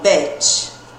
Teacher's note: ele é um I mais aberto, o som dele, ele não é estendido, agudo igual ao anterior, né? Ele é um som de E, né?